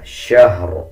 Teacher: شہر جب وقف کریں گے تو را کے دونوں زیر سائلنٹ کر دیں گے اور را کو پر یعنی موٹا پڑھیں گے. اس میں آپ نے یہ خیال رکھنا ہے کہ شین کے بعد جو ہا ہے اس کو شین کے ساتھ ملا کے پڑھنا ہے.